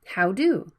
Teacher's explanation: the d sound is between vowels it can be flapped